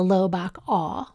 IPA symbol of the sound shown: ɑ